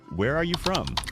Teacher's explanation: Voice goes down at the end. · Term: falling intonation